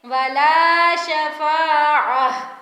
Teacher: گول تا پر جب بھی رکتے ہیں تو وہ ہا میں بدل جاتی ہے. گول تا وقف کی صورت میں ہا میں بدل جاتی ہے.